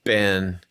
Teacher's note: Ben is a flat tone